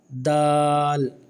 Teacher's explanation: دال یہ باریک حرف ہے، اور اس کو بھی کھینچ کے پڑھا جائے گا